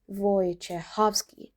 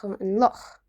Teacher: That in the middle of the name is a sound we don't really have in English. It's throaty breathy sound from the back of the throat